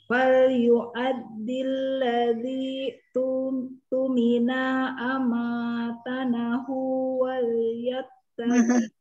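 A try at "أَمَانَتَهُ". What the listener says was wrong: Masih salah, Bunda. Jangan tanah, nata. Ya, konsentrasi titiknya, diperhatikan titiknya.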